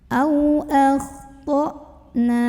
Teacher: Ini hamzah punya sifat syiddah dari segi suara, jadi makin kita tekan ke makhraj hamzah ya, ke tenggorokan bawah, makin gak ada bunyi.